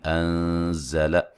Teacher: نون ساکن کا باریک اخفا ہے